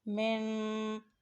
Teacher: رَبِّهِمْ، من، یہاں پر نون ساکن ہے، نون ساکن ہو تو یہ حرف غنہ ہے، اس پر غنہ کریں